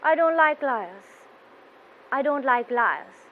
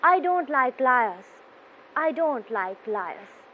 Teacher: voice should be going down towards the end